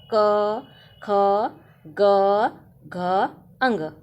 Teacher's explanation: ये कंठ से निकलने वाली ध्वनियां है इसलिए इसको कंठ ध्वनि कहते हैं